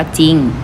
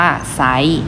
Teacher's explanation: ควบกล้ำแพ้พยัญชนะตัวหน้านะคะจะมีต่อจานซอโซ่ทอทหารสอเสือและศ.ศาลาส่วนพยัญชนะตัวที่2นะคะมีเพียงตัวเดียวเท่านั้นคืออารอเรือ เมื่อประสมด้วยสระเดียวกันแล้วจะออกเสียงเฉพาะพยัญชนะตัวหน้าเท่านั้นนะคะไม่ออกเสียงเรือ